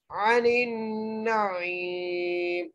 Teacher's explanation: ثم لتسألن، ایسے پڑھیں گے، ثم لتسألن یومئذ، جا کے ساتھ واو ہے، یہاں پر فلین کا قاعدہ لگ رہا ہے، یومئذ عن النعیم، عین کے اوپر زبر ہے، نون کو نون سے ملاتے ہوئے غنہ کرنا ہے اور عین کے ساتھ یا مدہ ہے، اس لیے ہم عین کو ایک الف کی مقدار کھینچ کے پڑھیں گے، عن النعیم، ایسے پڑھیں گے.